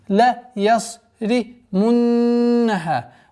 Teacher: Удержание назализации в размере двух огласовок, после которой долгота в размере двух огласовок фатха.